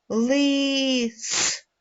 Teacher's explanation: цей звук шипить свистить він вимовляється важко і ніби теж розлючений вимовляється твердо то такий звук ми називаємо твердий приголосний і позначаємо однією рисочкою